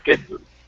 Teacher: the D changes to a J.